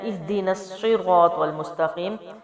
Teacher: حمزہ زیر ہے اور ہا جو ہے وہ جزم والا ہے، تو یعنی کہ ہا کو حمزہ کی زیر سے ملا کے پڑھیں گے، اور ہا جو ہے وہ سینے کی جانب سے ہے، وزنی آواز کے ساتھ ہے